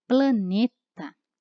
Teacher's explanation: Planeta, nós temos o E fechado